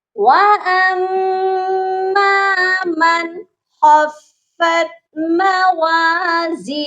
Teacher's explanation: آگے ہے موازینو، یہاں پر بھی آپ دیکھیے گا کہ ہا ہے اور اس کے اوپر الٹا پیش ہے، اسی لیے ہم نے ہو نہیں پڑھنا بلکہ ہا کو ہم ساکن کریں گے